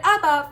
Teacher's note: the word Abba follows the typical rule in which the emphasis is on the second-to-last syllable